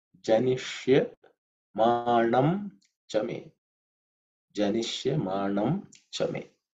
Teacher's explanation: janish is the cerebral sha. So the tip of the tongue should point up.